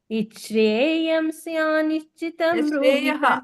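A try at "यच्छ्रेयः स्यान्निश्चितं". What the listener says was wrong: ಅದು ಶ್ರೇಯಂ ಅಲ್ಲ ಯಶ್ರೇಯ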